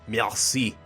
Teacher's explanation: your R's are this weird guttural sound in the back of your throat